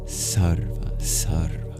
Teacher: So you'll have an extra breathy beginning of sarva